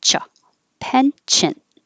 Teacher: you're stopping the airflow for a cha